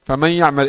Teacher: Ditulis ada, tapi di suara diucapkan tidak ada nun. Tapi masih ada suara gunnah.